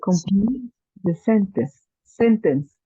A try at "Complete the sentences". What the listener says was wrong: Sentences. Sentences. Yes, remember that we have es at the end. Plural sentences.